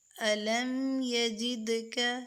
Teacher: دال پہ ہم کلکلہ کریں گے کیونکہ دال سکون میں ہے، یہ کلکلے والے حروف میں سے جو 5 حروف ہیں ان میں سے دال بھی ہے۔